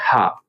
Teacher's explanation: इसका उच्चारण स्थान थोड़ा सा कंठ से थोड़ा सा नीचे होता है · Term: काकल्य व्यंजन